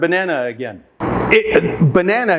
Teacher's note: in the word banana the first and third syllables have the schwa sound